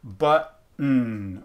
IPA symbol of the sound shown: tⁿ